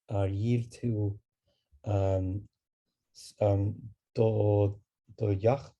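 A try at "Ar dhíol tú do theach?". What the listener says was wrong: We just put the little AR in front. And we still have the shevu after it, right?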